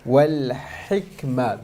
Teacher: the ha needs to be pronounced clearly, and the kaf, there's a hams on it